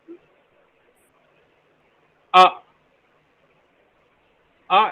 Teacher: ah ah is a central Valen right so we can say central unrounded vowel between open and half open